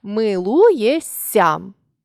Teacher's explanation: шиплячий плюс свистячий дорівнює свистячий